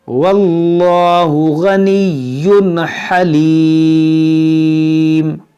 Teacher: تنوین کے بعد حروف حلقی ہے تو یہاں پر ہم اظہار کریں گے، یعنی کہ ہم یہاں پر غنہ نہیں کریں گے